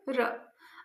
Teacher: हमारी जो जीभ है वो दो-तीन बार कंपन करती है र को बोलने में। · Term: प्रकंपित व्यंजन